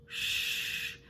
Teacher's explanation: SH sounds like this Shh with the lips pushing out kind of in a square shape